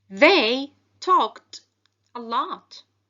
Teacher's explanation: the ed ending sounds like t because the verb talk ends in a voiceless sound, which is k